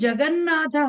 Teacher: సో జగత్ plus నాథ కాస్త ఏమైంది? అనునాసిక సంధి ప్రకారంగా ఈ తవర్గంలో ఉన్నటువంటి అనునాసిక నకారం కాబట్టి జగన్ ప్లస్ నాథ